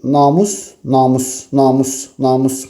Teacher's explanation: Namus, namus, namus, namus, musda vurğu olduğunu rahatlıqla biz görə bilərik.